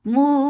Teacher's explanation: Because of this waqf, you are giving temporary sukoon here. This temporary sukoon has turned this 2 counts long vowel into 4. This is madarat li sukoon.